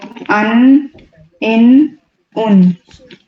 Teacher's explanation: نون کی ادائیگی کے لیے اس میں بھی زبان کے جو کنارے اور اوپر کنارے جو ہوتے ہیں وہ اوپر کے 6 دانتوں کے ساتھ ٹچ کریں گے. تو ان، ان، ان.